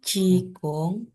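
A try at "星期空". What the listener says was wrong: Kongnya datar lagi. Balik lagi ke datar.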